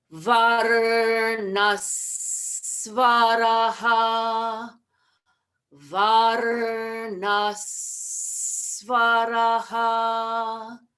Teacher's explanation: So the H with a dot under it, which is visarga, that has to have a change. So we're going to drop the aha of varnaha and we're going to change it to varnas. And then tack on the second sound of svaraha. So we're going to land on s and then jump off on s. · And then tack on the second sound of svaraha. So we're going to land on s and then jump off on s. And we're going to end up with varnas svaraha. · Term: rules of sandhi